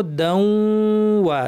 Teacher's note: দাউ বলার সময় তাসদিদের প্রথম অংশে গুন্না থাকবে, ওয়া বলার সময় গুন্না চলে যাবে